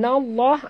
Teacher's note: lam pada lafaz jalalah dibaca tebal